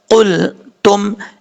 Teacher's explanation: اب اس کے بعد ہے قلتم، قاف حروف مستعلیہ میں سے ہے، پر پڑا جائے گا، اور اس کا مخرج زبان کی جڑ اوپر والے تالو کے نرم حصے سے لگے تو قاف پڑا جاتا ہے